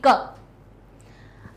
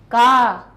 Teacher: स्थान कहाँ से निकल रही है इसकी ध्वनि, कंठ से निकल रही है